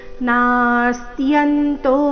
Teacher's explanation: ಗಮನ ಋ ಮತ್ತೆ ಶ್ರೇ ಮೇಲೆ ಆಘಾತ ಕುರು ಶ್ರೇಷ್ಠ ನಾಸ್ತ್ಯಂತೋ ನಾಸ್ತ್ಯಂತೋ ನಂತರ ಅರ್ಧ ಸ ಅರ್ಧತ ಪೂರ್ತಿ ಯ ಸಂಯುಕ್ತಕ್ಷರ ಯ ಮೇಲೆ ಆಘಾತ